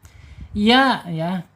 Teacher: Ya ada di secara makhraj ada di al-lisan, yaitu punggung lidah yang tengah ya. Terangkat sedikit tetapi tidak ada penekanan ya, tidak ada penekanan di langit-langit karena bukan huruf istilah.